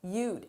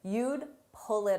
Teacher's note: It's difficult to hear that D because it's very soft, but grammatically it's important that it's there.